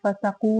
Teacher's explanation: واو مدہ ہے 2 حرکت لمبا کریں گے